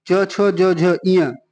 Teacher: छोटी बड़ी च छ ज का उच्चारण स्थान तालव्य होता है